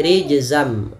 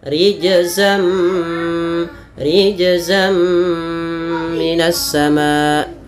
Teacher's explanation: Awalnya rijzan ketemu mim menjadi rijzam. Nunnya diganti dengan mim. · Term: idgam bighunah